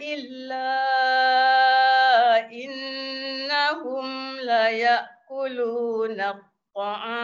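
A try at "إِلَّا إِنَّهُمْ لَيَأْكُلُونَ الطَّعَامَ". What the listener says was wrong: Cantik.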